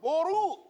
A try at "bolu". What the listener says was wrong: bukan boru, bolu.